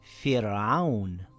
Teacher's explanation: It reads as Fir'aun with a light Ra.